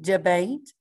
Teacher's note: your schwa here is your e so it's not saying the typical e sound it's saying uh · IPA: /ə/